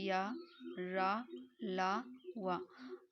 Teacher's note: हवा मतलब हवा बिना रगड़ खाए मुंह से बाहर निकल जाती है उसे हम अंत स्थित व्यंजन कहते हैं।